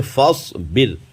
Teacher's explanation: اب جیسے فصبر، یہ را ساکن سے پہلے زیر اسی کلمے میں ہے، زیر اصلی بھی ہے اسی کلمے میں ہے، تو را کو باریک پڑھیں گے۔ را ساکن سے پہلے زیر اصلی اسی کلمے میں ہوتا ہے تو را کو باریک پڑھتے ہیں